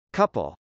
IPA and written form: kˈʌpəl (couple)